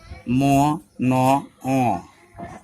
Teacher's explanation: They are made in your nose. Your nose vibrate. আরবিতে গুন্না উচ্চারণের মতো হয়। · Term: nodule sound